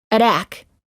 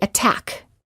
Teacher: the T does not change to a fast D sound if the t is within a stressed syllable